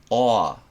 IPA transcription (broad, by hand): ɒə